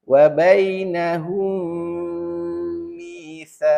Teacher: Jadi seolah-olah huruf mim yang pertama tu kita tak bunyikan. Kita masuk pada huruf mim yang bersabdu. Tapi mim tu tak boleh dibuang.